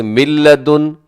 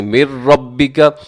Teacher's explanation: اس میں نون کا ساؤنڈ بالکل ختم ہو جاتا ہے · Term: ادغام